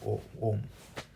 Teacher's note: because A and U, when you say it together, it becomes O, right? That's the diphthong, O, Om.